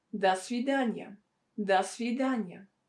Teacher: this preposition до that should be pronounced as да, because it's not stressed.